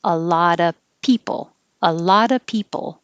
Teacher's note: t connects and it changes to a d and even though of is pronounced with a v we won't hear the v unless a word after it begins with a vowel